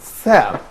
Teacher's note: the airstream actually is released from the mouth through a narrow opening of friction, and we have very limited space by which the airstream is released out from the mouth. · So it's fricative, which means صوت احتكاكي, or a sound that probably has a certain level of friction, and also it's called oral sound, it's interdental sound, and a voiceless sound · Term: fricative sound